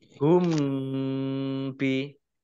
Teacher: Wawu fathah alif matobihi hum bi, mim sukun bertemu dengan huruf ba, bacaan ikhfa Safawi dibaca samar-samar.